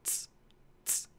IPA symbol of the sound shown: t͡s